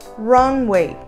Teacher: muito cuidado para não falar Runaway colocar um sonzinho de ar depois da letra N